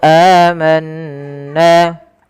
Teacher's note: Amanna, lagi kita dapati ada mad badal 2 harakat di lafal a. Manna, nun berharakat tasydid ditahan suara bunyinya amanna karena ia kita hukumi dengan bacaan gunnah.